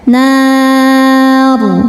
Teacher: Mad tabi'inya alif didahului fathah, huruf yang disukunkannya ro. Maka nunnya panjang, boleh 2 atau 4 atau 6 harokat asal konsisten dalam satu kali baca. Nar. Dan saat berhenti ro-nya ini disukunkan, dibaca secara tafkhim. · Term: mad arid li sukun